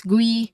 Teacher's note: not a short e sound but a long e sound here because it's gree so it's a long e sound.